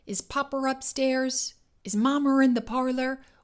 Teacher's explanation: the intrusive R is a key feature of received pronunciation, the accent of esteem in England at the time.